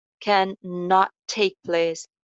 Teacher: Ending jo t sound hai, next sound bhi same hai. So hum inko alag alag articulate karne ki bajaye ek hi sound jo hai wo bana denge.